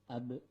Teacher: Huruf ba termasuk ke dalam kategori huruf qalqalah, yaitu huruf yang ketika sukun dibaca memantul